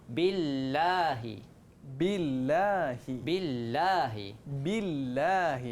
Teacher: Bila baris bawah, kita kena baca nipis.